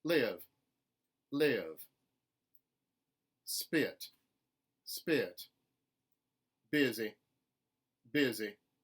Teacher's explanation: you will hear a contemporary southern speaker use an e with a schwa off glide in certain words like this live live spit spit busy busy